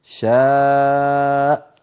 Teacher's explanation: نقفل الوترين الصوتيين بلطف فتخرج الهمزة